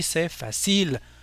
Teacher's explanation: on a tendance nous à porter l'accent tonique sur la dernière syllabe audible